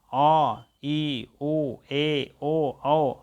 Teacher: विवृत आपको है आ, पूरा जैसे मुंह खोल कर बात किया जाए